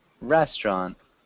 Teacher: So it sounds like there are only two syllables